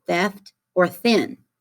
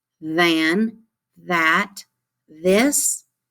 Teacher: when you say thick you don't feel that vibration in your throat